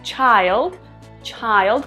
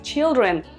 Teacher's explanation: en la forma singular pronunciamos child child con ay en la forma del plural pronunciamos children con y children